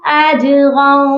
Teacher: جیم پر قلقلہ ہوگا